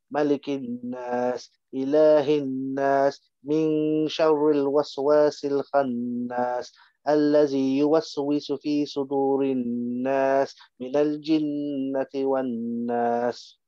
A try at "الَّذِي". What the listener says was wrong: الذي, it's not الذي, it's not a za, it's a dal, it's a dal, yeah, it's a letter after dal, dal dal, not ra and za. Not za. So you have to make this a bit more softer. Alladhi, dhal. Alladhi, dha, dha, dha. Tip of the tongue and the bottom of the teeth.